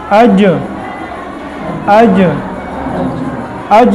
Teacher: زبان کا درمیانی حصہ یعنی وسط زبان اور پھر اوپر کا تالو، اس کے درمیان سے 3 حروف نکلتے ہیں · زبان کا بیج اور اوپر کا تالو یہ تھوڑا سا مل جاتا ہے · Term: جیم